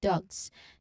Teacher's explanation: So it is specifically when the preceding sound is voiced. So it's the G sound followed by the voiced Z sound as in dogs. So remember the Z here means your vocal cords are vibrating. · Next is the GZ cluster as in dugs. This is voiced counterpart to ts.